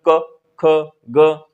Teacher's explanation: क वर्ग जो जब भी आप बोलेंगे तो बिना कंठ की सहायता से क वर्ग नहीं बोल सकते हैं। अंदर से आवाज आएगी।